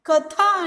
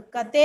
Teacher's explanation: ಈ ಉದಾಹರಣೆಯನ್ನು ನೋಡೋದಾದರೆ, ಕಥಾ ಎನ್ನುವಂಥದ್ದಿದೆ, ಇದು ಕತೆ ಆಗಿದೆ. ನೋಡಿ, ಥ ಮಹಾಪ್ರಾಣಾಕ್ಷರ ಇದೆ, ತೇ ಇಲ್ಲಿ ಅಲ್ಪ ಪ್ರಾಣಾಕ್ಷರವಾಗಿ ಬದಲಾವಣೆಯನ್ನು ಹೊಂದಿದೆ · ತತ್ಸಮದಲ್ಲಿ ಮಹಾಪ್ರಾಣಾಕ್ಷರಗಳಿಂದ ಕೂಡಿರುವ ಪದಗಳು ತದ್ಭವಗಳಾದಾಗ ಅಲ್ಪಪ್ರಾಣ ರೂಪವನ್ನ ಪಡೆಯುತ್ತದೆ. ನೋಡಿ, ಸಂಸ್ಕೃತದಲ್ಲಿರುವಂತಹ ಮಹಾಪ್ರಾಣಾಕ್ಷರಗಳು ಕನ್ನಡಕ್ಕೆ ಬಂದಾಗ ಅಲ್ಪಪ್ರಾಣಗಳಾಗಿ ರೂಪಾಂತರವನ್ನು ಹೊಂದುತ್ತವೆ. ಅಂದರೆ ತತ್ಸಮ ಅಂದರೆ ಸಂಸ್ಕೃತ ಪದಗಳು ಯಾವ ಮಹಾಪ್ರಾಣಗಳಿಂದ ಕೂಡಿದಾವಲ್ಲ ಅವು ಕನ್ನಡಕ್ಕೆ ಬಂದಾಗ ಅಲ್ಪ ಪ್ರಾಣಗಳಾಗಿ ಮಾರ್ಪಾಟನ್ನು ಹೊಂದುತ್ತವೆ ಎನ್ನುವಂಥದ್ದು.